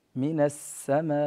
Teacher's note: السين وهي حرف أصلي يتصف بست صفات ومن بين صفاته الصفير ، فهنا لابد أن نعطيه هذه الصفة الواردة فيه من السماء